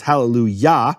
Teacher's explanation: And what happens because of that is the kamat of yah, which yah is always the emphasized syllable. It's hallelujah.